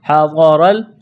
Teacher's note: ہا اور ضاد کو جلدی پڑھنا ہے بغیر کھینچ کے، ضاد کو موٹا کرنا ہے